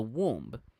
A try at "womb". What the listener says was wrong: it sounded like you said the B as well. It's silent.